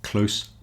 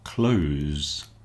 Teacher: Close meaning near with a s and close meaning shut with a z.